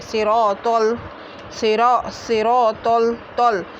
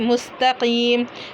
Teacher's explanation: तो पुर होता है और ता पतला होता है। तो को पुर ही पढ़ना है।